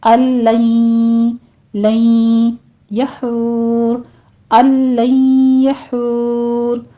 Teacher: अल बोलना है, ये नून आपने ड्रॉप कर देना है क्योंकि इदगाम है यहाँ पर बिला गुन्ना, तो गुन्ने की आवाज़ नहीं आनी चाहिए। आगे गुन्ने की आवाज़ लाएंगे क्योंकि इदगाम अल गुन्ना हो रहा है।